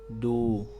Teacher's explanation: ujung lidah menempel ke Pangkal gigi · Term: huruf Dal